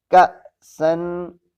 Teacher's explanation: حمزہ ہے، جھٹکے سے پڑھا جائے گا